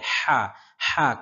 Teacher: হা কণ্ঠনালীর মধ্যখান থেকে, হা যেন হায়ের মতো উচ্চারণ না হয়